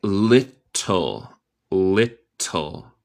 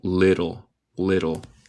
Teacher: en inglés estadounidense decimos los T's en el medio de palabra muchas veces como R en español. So suena como little.